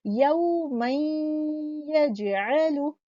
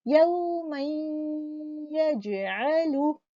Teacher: नून का गुन्ना इसमें बाकी है और ये गुन्ना कौन सा है, अकमल गुन्ना है